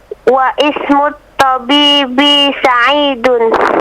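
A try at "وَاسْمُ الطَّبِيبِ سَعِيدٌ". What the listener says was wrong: Wa ismu. Bukan begitu, bacanya wasmu. Wasmut tabib. Jadi untuk kalimat ismu, alifnya itu ketika di tengah tidak dibaca. Nah, jadi ketika ada waw, wasmu, seakan-akan alifnya tidak ada. Seakan-akan dia tidak ada, tapi tulisannya tetap ada. Tapi tidak dibaca. Wawnya langsung ke huruf apa? Ke huruf sin. Wasmut tabibi.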